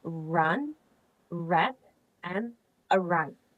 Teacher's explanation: And the last one is ra. The sound ra is in post-alveolar, where the tongue is close to the roof of the mouth